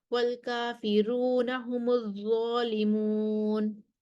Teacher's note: کافرون پر ورش کے لیے ترقیق الراء ہے